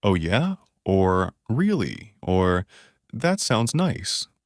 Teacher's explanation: you can also use things like, oh yeah, or really, or that sounds nice, with a slightly rising intonation. These signal that you're interested and give the other person space to continue.